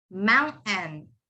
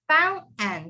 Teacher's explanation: The TAIN, all of that turns into N. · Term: silent T